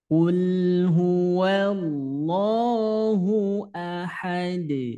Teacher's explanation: Ketika huruf dal sukun maka terjadi pantulan. Ahad namanya qalqalah kubro. Iya, jadi pantulannya kuat ya. Pantulannya kuat.